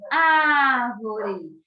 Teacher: Se vocês observaram, a minha boca ficou bem aberta, certo? E o A aí teve esse timbre, esse som aberto.